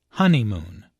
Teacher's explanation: There are three syllables in honeymoon with a stress on the first syllable. Honeymoon. This content word is culturally important, so it's emphasized.